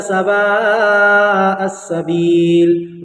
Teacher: ود کثیر یہاں پر سوا میں جو ہے آپ کو 4 الف کھینچنا ہے کم سے کم، حروف مدہ کے بعد حمزہ اسی کلمے میں